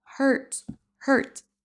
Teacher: On ne prononce pas du tout le U.